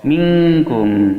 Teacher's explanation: Kaf makharijul hurufnya berada di pangkal lisan setelah qaf